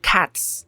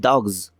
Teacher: in English, the word cats ends in an S sound, but dogs ends in a Z sound.